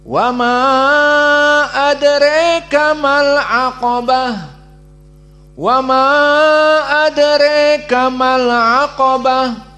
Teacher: disebutkan tawassut dengan imalah al-kubra pada adraka.